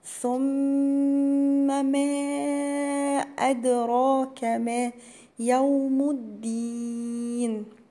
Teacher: الميم المشددة تبقى برضو غنة بمقدار حركتين